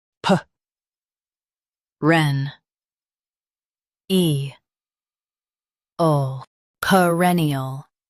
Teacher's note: Emphasize reh and soften ee ul.